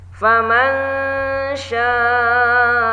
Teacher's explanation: ada nun sukun bertemu shin, maka ini adalah hukumnya ikhfa awsat. Nah, di sini dibaca dengung, ditahan dengungnya.